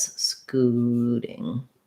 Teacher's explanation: scooting with a long first syllable, shorter second syllable